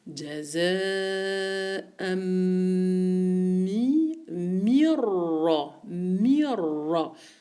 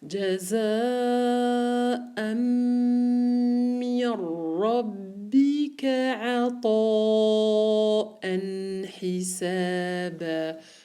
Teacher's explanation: Et de le mim, je fais directement la liaison avec le ra. Le noun, il est complètement muet.